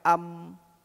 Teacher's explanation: mim huruf bibir yang rapat